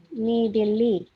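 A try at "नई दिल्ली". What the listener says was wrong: Oke, I panjang ya ini ya. Oke, jadi Delhi itu dibaca kalau Hindi itu Dilli ya, Dilli.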